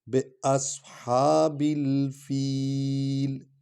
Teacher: با کو لام کے ساتھ ملائیں گے۔ باصحاب الحا، ہا کو لمبا کر رہے ہیں اس لیے اس پر الف ہے، کھڑا زبر ہے۔